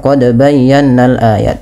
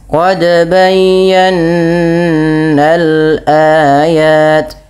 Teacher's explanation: kita harus menyempurnakan gunahnya, yaitu bunyi suara nun yang ditahan